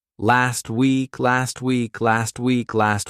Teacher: We take that T over, and it's going to sound a bit more like tweak, like if you tweak something.